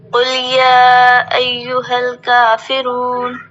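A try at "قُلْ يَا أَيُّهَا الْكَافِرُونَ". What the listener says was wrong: کلے نہیں، لام ساکن ہے تو یہاں کی بات نہیں ہم بتا رہے ہیں. جہاں پر بھی کوئی حرف ساکن ہو، کہیں پر بھی.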